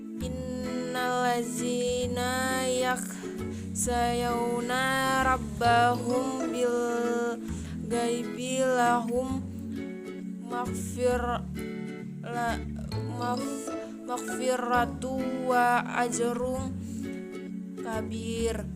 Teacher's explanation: Ikham mimi atau ikham mutamatsilain terjadi ketika huruf mim mati bertemu dengan huruf mim Cara membacanya seperti melafalkan mim yang bertasjid. Huruf mim pertama dimasukkan ke mim kedua, kemudian didengungkan atau diberi guna.